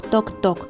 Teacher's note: губки злегка розтягнуті між зубками невеличка щілинка кінчик язика торкається верхніх зубів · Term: звук т